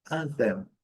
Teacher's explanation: anthem, a primeira sílaba forte